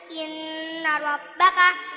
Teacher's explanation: ra tafkhim sebab ra fathah